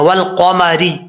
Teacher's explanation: قاف جو ہے حروف مستعلیہ میں سے ہے، پر کر کے پڑھنا ہے